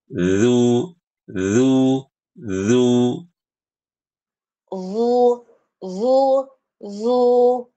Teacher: lidahnya nempel ke gigi, sedikit keluar.